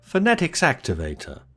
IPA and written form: fə.ˈne.tɪks ˈæk.tɪ.veɪ.tə (Phonetics Activator)